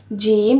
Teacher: زبان کا درمیانی حصہ اوپر تالو کو لگانے سے ادا ہوتا ہے۔ جو ہماری زبان کا درمیانی حصہ ہوتا ہے نا، مطلب جو ہماری زبان کا درمیان ہوتا ہے، درمیانی حصے کو جب ہم اوپر تالو سے لگائیں گے نا تو پھر حرف جیم ادا ہوگا۔